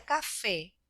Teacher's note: la sílaba tónica es donde hacemos mayor fuerza de voz en este caso fe